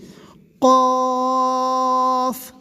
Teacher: نہیں بلکہ اس کی آواز، اس طرح کی آواز آئے اور شروع میں قلقلاہٹ آئے حلق سے